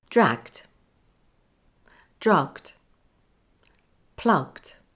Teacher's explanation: remember there's only one explosion at the end